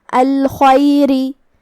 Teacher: آخر میں حرف الراء کا حکم ہے ترقیق، کیونکہ اس کے نیچے زیر ہے، ہم را کو ہلکی آواز میں پڑھیں گے · کلمت الخیر میں یہاں حرف الخاء ہے، خاء حروف التفخیم میں سے ہے، ہم اسے بھاری آواز میں پڑھیں گے. خاء کی ادائیگی حلق کے اوپر والے حصے سے ہے.